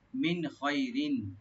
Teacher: মিন এখানে নুন সাকিন এজাহার করবো আমরা, এখানে গুণ হবে না। খয় এখানে খ একটু রাইট দিয়ে পড়বেন ডিপ করে, খয়।